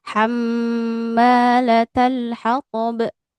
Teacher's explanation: Di bagian mimnya agak ditahan ya, gunnah.